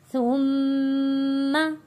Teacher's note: میم تشدید پہ غنہ ادا کیا ہے۔